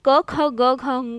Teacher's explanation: ठीक है, क वर्ग को कंठव्य व्यंजन कहते हैं, क्योंकि अगर हम क ख ग घ ङ का उच्चारण करते हैं तो जो हमारी ध्वनि है वो कंठ से है ना, कंठ मतलब गले से निकलती है